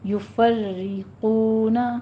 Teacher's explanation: یفرقون، فری یہ را سے پیچھے تو زبر آ رہی ہے لیکن را تشدید والی ہے کسرہ سے. ٹھیک ہے، کسرہ کی تشدید والی را ہے تو یہ را باریک پڑھی جائے گی